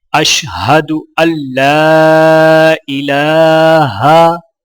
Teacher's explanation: لام کو الف کے ساتھ ملاتے ہوئے ایک الف کے برابر کھینچ کے پڑھیں گے، اور یہاں پر لام کے اوپر کھڑا زبر ہے تو لہٰذا ایک الف کے برابر کھینچ کر پڑھا جائے گا۔